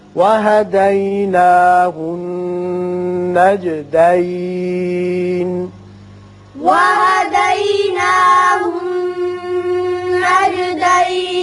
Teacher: نون مشدد ہے، غنہ کریں گے.